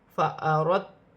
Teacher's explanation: دال ساکن ہے، تا مشدد ہے، دونوں کو ملا کر پڑھا جائے گا، جیسے فا زبر فا، حمزہ زبر آ، فا را دال تا زبر رت، فأردت تا پیش تو، فأردت۔